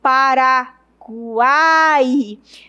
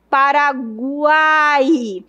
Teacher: Veja que o U é um pouco fraco, o I é um pouco fraco e o A é forte. Paraguai. Então, eu tenho encontro de uma semi, de uma vogal e de uma semivogal. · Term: tritôo